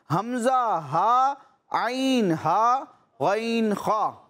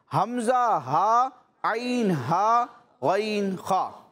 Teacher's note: ये 6 हुरूफ हल्की हैं जो हलक के मुख्तलिफ हिस्सों से अदा होते हैं